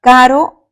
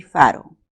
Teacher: dos fonemas esto nosotros entendemos que es un par mínimo pero la diferencia se está dando entre este fonema k k es oclusivo en cambio la f es un fricativo